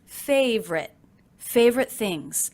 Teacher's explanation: I notice that I'm dropping the middle unstressed syllable in favorite. So it's not favorite, but simply favorite, favorite things.